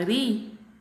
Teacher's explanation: aqui eu pronuncio ela com mais intensidade a jama palavra marido a minha penúltima sílaba dri eu tenho a pronúncia dela com maior intensidade então nessa palavra marido uplab a tônica é a sílaba já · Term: sílaba tônica